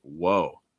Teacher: a lot of times it's dragged out a little bit